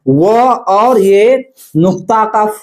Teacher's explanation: तो दांत और ओष्ठ से उच्चारण होता है। व और ये नुक्ता का फ का उच्चारण स्थान कहां से होता है? दांत और ओष्ठ से होता है। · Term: दंत ओष्ठ